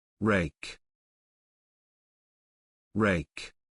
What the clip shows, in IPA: reɪk